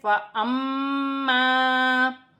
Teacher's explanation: یہاں پر میم مشدد ہے، میم مشدد میں غنہ کیا جائے گا، میم کو حمزہ کے ساتھ ملا کر پڑھا جائے گا، جیسے فَأَمَّا، اور الف مدہ بھی بن رہا ہے۔